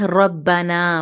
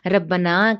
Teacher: रॉ मोटा बा मुशद्दद के साथ रब्बना